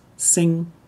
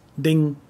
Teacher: is different depending on whether you speak northern or southern dialect in northern dialect it's pronounced like ng in english